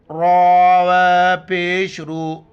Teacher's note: یہاں پر را پر پیش ہیں تو را کو موٹا کر کے پڑھیں گے